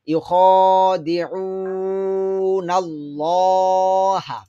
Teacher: এখানে আল্লাহ শব্দটা মোটা হবে, ল হবে, লা হবে না। তো আমরা একত্রে মিলে পড়লে ইউটা দ্রুত হবে, খটা লং হবে, দালটা দ্রুত হবে, আইনটা লম্বা হবে।